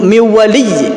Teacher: bi gunnah ini harus sedikit didengungkan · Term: idgham bi gunnah